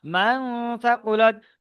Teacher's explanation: নুন সাকিনের পরে হুরুফে ইকফা 15 মধ্যে থেকে সা এসেছে, তাই নুন সাকিনের আওয়াজকে নাকে তুলে একালি পরিমাণ গুন্নার সহিত পড়তে হবে। সায়ের উপরে জবর আছে, জবরটি হলো হারকাত, হারকাত পরে তাড়াতাড়ি পড়তে হয়, টান দেওয়া নিষেধ।